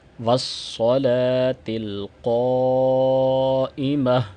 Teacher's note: صاد کو یہاں پہ موٹا کریں گے تاکہ سین اور صاد کے اندر فرق ہو جائے، ورنہ والصلاۃ پڑھیں گے تو سین سے بدل جائے گا صاد، اور یہ بھی لحن جلی ہے۔ · قاف کو بھی موٹا پڑھا جائے گا، اور قاف کو لمبا کر کے پڑھا جائے گا کیونکہ مد آ رہی ہے الف جو اس کے ساتھ ہے۔